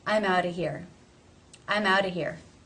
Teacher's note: the word of is generally reduced to Simply being the schwa sound no consonant